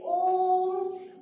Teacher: इसमें ह्रस्व स्वर और दीर्घ स्वर से भी ज्यादा समय लगता है, तिगुना समय लगता है। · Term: प्लुत स्वर